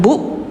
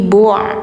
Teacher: ini ain tenggorokan tengah, bacanya jangan bu tapi bu'